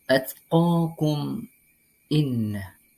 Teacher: Cara membacanya yakni dengan membunyikan secara jelas bunyi atau suara mim sukun dan huruf alif tanpa disertai dengan dengung. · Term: ilhar syafawi